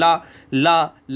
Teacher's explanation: ला जब आप बोलोगे तो आपकी जीभ फोल्ड हो जाती है, क्योंकि जीभ का नुकीला हिस्सा ऊपर लगता है, ला ला ला, और ये फोल्ड हो जाती है, और इधर जो बीच में जो हवा किनारे में बचती है वो पार्श्व से हवा निकल जाती है, इसीलिए उसको क्या है, जीभ ऐसी हो जाती है और यहाँ से हवा निकल जाती है आगे से पीछे से, है ना। · ला का उच्चारण करते समय हमारी सांस जीभ के बगल पार्श्व से गुजरती है, इसलिए इसका नाम पार्श्विक हो गया, ला। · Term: पार्श्विक व्यंजन